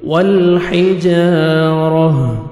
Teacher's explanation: الف مدہ، جیم کو 1 سیکنڈ کھینچیں گے، را کو مرزبر ہے، جب سٹاپ کریں گے جیم پہ تو تا کو ہا میں چینج کریں گے، یہ گول تا جب سٹاپ کرتے ہیں اس کو ہا میں چینج کرتے ہیں، ہا جزم، ہا سکون میں، تو را زبر ہا جزم، را کو موٹا کر کے پڑھیں گے، لاسٹ میں ہا کا ساؤنڈ آنا چاہیے